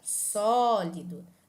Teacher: E mais uma vez deve ser acentuada por fim a palavra sólido que também é uma proparoxítona porque a sílaba tônica é a anti penúltima